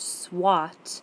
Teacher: the word swat, you still hear the ah sound when you're putting that W in